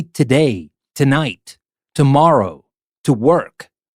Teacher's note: the preposition to usually reduces so much that it is like not really to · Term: reduce the sound of two